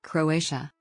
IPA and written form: kroʊˈeɪʃə (Croatia)